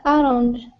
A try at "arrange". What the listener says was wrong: Arrange, arrange. Yeah, arrange. Not orange. Second syllable stress, and the second A is the long A sound. So arrange.